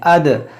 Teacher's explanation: दाल साकिन है, तो इसमें हम कलकला करेंगे, अद, हमज़ा दाल ज़बर अद, इस तरह आवाज़ लौटेगी।